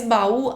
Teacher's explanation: baú, a última sílaba é mais forte, então ela é uma oxítona